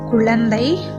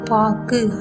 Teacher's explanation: அதாவது சொல்லின் முதலிலும் இடையிலும் வரும் பொழுது முழுமையாக ஒலிக்கிறது, அது ஒரு மாத்திரை. ஆனால் சொல்லின் இறுதியில் வரும் பொழுது ஒரு மாத்திரை அளவிலிருந்து குறைந்து அரை மாத்திரையாக ஒலிக்கிறது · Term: குற்றியலுகரம்